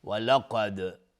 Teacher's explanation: دال قلقله میخواد چون ساکنه